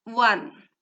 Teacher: Here we see O in the beginning but we hear a consonant sound wa one wordৰ ক্ষেত্ৰতো O হৈছে এটা vowel কিন্তু ইয়াৰ সাউন্ডটো উচ্চাৰণৰ